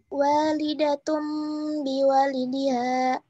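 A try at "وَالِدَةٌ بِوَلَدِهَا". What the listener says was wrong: Biwaladiha. Nah, itu kurang ditahan. Harusnya walidatum biwaladiha.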